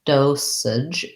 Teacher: dosage has first syllable stress and it has a clear o vowel